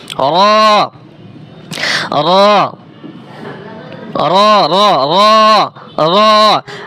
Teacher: জিহ্বার আগার উল্টো পিঠ উচ্চারণ করছেন, এটা হয় না। জিহ্বার আগা তার বরাবর উপরে তালুর সঙ্গে লাগাইয়া র